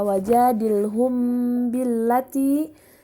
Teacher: Selanjutnya, pada kata wajadilhum billati terdapat mim sukun bertemu dengan ba, maka hukum tajwidnya adalah ikhfa syafawi, dibaca dengung dan ditahan 2 harokat.